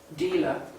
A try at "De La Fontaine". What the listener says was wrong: It's a D. It sounded like dealer. Dealer. Fontaine. La Fontaine.